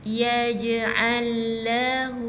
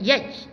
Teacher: Jadi dia ada detakan Detakan maksudnya bila kita sebut huruf jim ni bila dah dalam keadaan mati dia akan kita baca dengan sedikit lantunan lantunan yang ringan sebab jim ni berada di tengah-tengah perkataan. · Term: huruf qalqalah